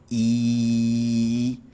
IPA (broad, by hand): i